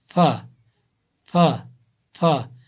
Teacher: ثنایا علیہ کا کنارہ اور نیچے کے ہونٹ کا تری والا حصہ، ثنایا علیہ کا کنارہ، सनाए उलिया का किनारा और नीचे के होंठ का तरी वाला हिस्सा, यानी जो सनाए उलिया हैं, सनाए उलिया उनका किनारा नीचे के होंठ के साथ टच होता है, तरी वाला हिस्सा। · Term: فا